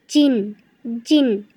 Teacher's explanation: জিম কিন্তু জিব্বার মাঝখান থেকে